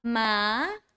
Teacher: Second tone goes up, ma. So your pitch grow higher